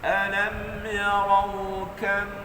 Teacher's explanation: pastikan bila tuan-tuan dan puan-puan sebut kaf, dia ada angin. Ada angin. Walaupun dia tidak mati, dia berbaris macam tu, ada angin.